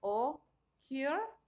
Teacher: El primero, que es occur, fíjense, son dos sílabas, occur, y se está enfatizando en la última sílaba